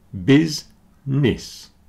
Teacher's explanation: business has two syllables and they both sound like the letter I busness okay the middle syllable doesn't do anything business as does